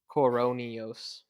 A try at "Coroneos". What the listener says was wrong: It's not Neos, it's Noes.